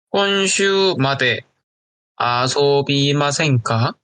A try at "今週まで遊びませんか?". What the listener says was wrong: 아즈미마센까 잘했어요.